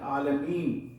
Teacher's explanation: نون زبر نہ ہے، لیکن ہم پڑھتے ہیں عالمین، یعنی اس پر سکون لا دیتے ہیں، جزم لا دیتے ہیں.